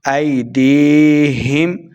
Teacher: دال زیر یا دی یا مدہ ہے اس کو 2 حرکات لمبا کر کے پڑھیں گے